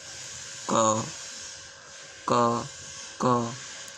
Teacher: ये जो ध्वनि वाली नली होती है, गर्दन गले, उस पर रखिए इसे और महसूस कीजिए कि वायु गले में टकरा रही है कंठ में। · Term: क ध्वनि